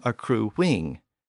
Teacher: And a word like accrue has a U sound at the end, but if we put an I-N-G at the end of the word, it tends to become accruing with a W sound